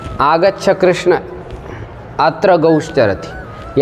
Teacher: तो इसलिए हम संबोधन को थोड़ा लंबा करते हैं। कृष्ण 3 मात्रा कर रहे हैं, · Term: प्लुत